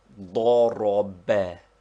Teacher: which is pronounced ضرب, with the accent on the last syllable.